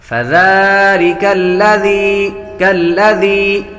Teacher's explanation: یا بھی حروف مدہ میں سے ہے، اس لیے اس کو ایک الف یعنی دو حرکات کے برابر کھینچ کر پڑھیں گے۔